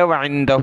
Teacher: وعندہ، ہا پر مد کرنی ہے، نون ساکن پر ہم نے ناک میں آواز پیدا کرنی ہے